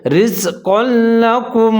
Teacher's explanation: जब भी हुरूफ जरमलून से पहले तनवीन या नून साकिन आ जाए वहाँ इदगाम करेंगे। यहाँ लेकिन हम इदगाम करेंगे बग़ैर गुन्ने के।